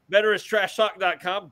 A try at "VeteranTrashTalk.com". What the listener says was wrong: No S. Veteran. Veteran Trash Talk.